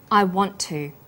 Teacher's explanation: the final t sound in want is held slightly longer on the tongue · The t sound is pronounced only once. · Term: consonant plus same consonant linking